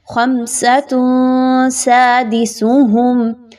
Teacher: تا کے اوپر دو پیش کی تنوین کے بعد سین ہے تو یہاں پر اخفا کریں گے